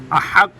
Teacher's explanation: ہا بھی گلے کے درمیان سے ادا ہوتی ہے